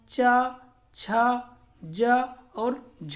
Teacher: अगर संघर्षी के साथ स्पर्श लग जाए तो हमारा चा, छा, जा और झा होता है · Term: स्पर्श संघर्षी